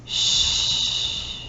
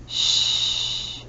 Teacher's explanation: We have one sound for SH, sh, and because it doesn't vibrate, it's unvoiced.